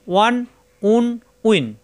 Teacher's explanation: দুই ঠোঁট থেকে উচ্চারণ, দুই ঠোঁট মিলবে না।